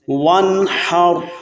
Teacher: یہاں ہم نے اظہار کرنا ہے کیونکہ نون ساکن کے بعد ح حروف حلقی میں سے ہے